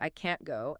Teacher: native speakers swallow the T in can't all the time. We say, I can't go, and it sounds almost identical to I can go if you aren't paying attention.